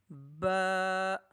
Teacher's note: बा दोनों होंठों के तर वाले हिस्से से अदा होगा।